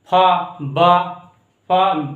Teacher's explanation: दोनों होंठ मिलकर और कुछ खुला रहकर फा बा अदा होता है।